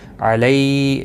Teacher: لیالین ہے، تھوڑا نرمی کے ساتھ کھینچ کر ادا کریں گے